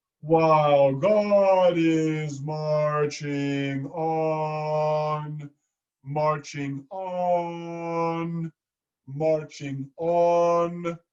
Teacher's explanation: We want to be saying marching on, so our audience knows what we're saying, as opposed to marching off. So the shadow vowel is you actually add a little schwa at the end.